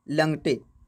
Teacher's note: कभी न के बदले ल प्रयोग होता है। जैसे नंगटे, नंगटे के जगह लंगटे ये प्रयोग होता है।